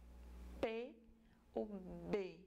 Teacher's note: um som bilabial como P ou B que que acontece eu uso os dois lábios o lábio inferior e superior entra em contato pro som ser produzido